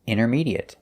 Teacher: We notice that the T is silent. We don't say intermediate.